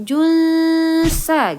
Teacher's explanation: Jangan bacanya jung tapi samar ke huruf sa atau huruf sin, junsa gitu ya. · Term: ikhfa hakiki